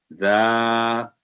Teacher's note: آگے ہے زا, یہ بھی باریک آواز والا حرف ہے, ہلکی آواز. جب زبان کی نوک سامنے والے نیچے 2 دانتوں کے اندرونی حصہ کو لگے تو یہ حرف ادا ہوتا ہے